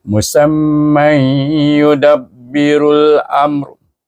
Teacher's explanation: Tetapi kalau kita menyambung tanwin bertemu dengan ya sama juga idgham maal ghunah naqis juga dengan dengung dua harakat